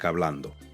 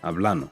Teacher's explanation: Your O at the end of words may get swallowed. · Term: pronunciation shift